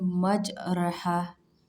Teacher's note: membaca Fatah yang condong ke kasrh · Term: imala, imalah